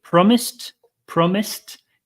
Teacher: you hear that last sound it's not a D sound it's a t sound